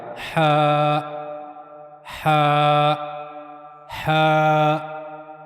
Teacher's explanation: اس سے پہلے ایک چیز سمجھ لیں کہ گلے کے 3 حصے ہوتے ہیں، ایک بالکل اوپر والا یعنی منہ کی طرف والا، ایک گلے کا درمیانی حصہ، اور اس کے بعد تیسرا ہے گلے کا سب سے نچلا حصہ سینے کی طرف۔ تو ہا جو ہے وہ گلے کے درمیانی حصے سے ادا کیا جاتا ہے، ہا۔ تو ہا کو پڑھنے کے لیے اور ہا کو ادا کرنے کے لیے گلے کے درمیانی حصے کا استعمال کیا جائے گا، ہا ہا ہا۔